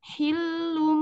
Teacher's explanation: tanwin yang bertemu dengan ba, hukumnya iklab. Iklab lalu digunah ke mim.